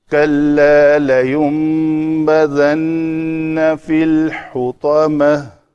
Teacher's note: نون ساکن کے بعد با آ رہا ہے تو اقلاب کا قاعدہ ہے، تو اس لیے اس کے اوپر میم لکھی ہوئی ہے۔